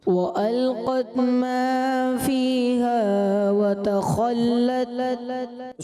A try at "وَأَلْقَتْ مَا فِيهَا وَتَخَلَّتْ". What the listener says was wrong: جی ماشاءاللہ جواب درست دیا ہے، لیکن بیٹا حرف مدہ کی مقداریں جو ہیں اس میں بار بار عرض کر رہا ہوں۔ عبداللہ طاری کو بھی میں نے وہی عرض کیا، آپ سے بھی وہی عرض کروں گا۔ نمبر بہرحال آپ کے میں نہیں مائنس کر رہا، آپ بھی کوشش کریں اگلے راؤنڈ میں اس کو حرف مد کو درست پڑھیں،